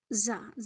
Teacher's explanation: زا میں سختی اور سیٹی